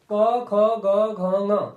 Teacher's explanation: क का उच्चारण स्थान क्या है कंठ है